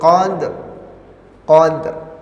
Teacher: qalqalahnya dulu baru ro-nya seolah-olah mengucapkan ro